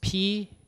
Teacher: one this is voiceless stop right you guys know voiceless stop they're stop but they're voiceless because P your vocal cords do not vibrate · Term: voiceless stops